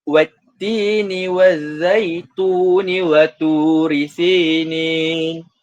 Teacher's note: Tun tu dibaca secara dua harakat, itu mad tabi'i. Kerana tidak berlakunya mad arid li sukun.